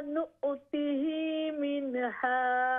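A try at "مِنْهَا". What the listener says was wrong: मिन झटका न दीजिए, कलकला नहीं है, मिन हा, मिन हा।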